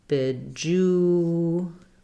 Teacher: the e is also reduced to an I sound. So bejeweled.